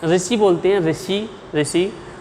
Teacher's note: ऋषि को बोलते समय हमारी जो जीभ है उसका जो अगला वाला भाग है वो ऊपर वाले दांतों के मसूड़ों को स्पर्श करेगा।